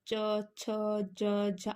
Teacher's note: अब चा वर्ग है, चा को बोलोगे अब च, छ, ज, झ। आपकी जीभ ऊपर तालू से टकरा रही है